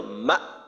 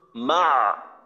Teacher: এই যে এইখানে কিন্তু আমাদের এই সিফত দিয়েই পার্থক্য হয়ে যাবে, কারণ হামজা হলো সিদ্ধার হরফ, সিদ্ধার সময় আওয়াজ বন্ধ থাকে, তো মা এই আওয়াজটা বন্ধ হয়ে যাবে। কিন্তু আইন তাওয়াসুতের হরফ, এখানে আওয়াজটা কিন্তু বন্ধ হবে না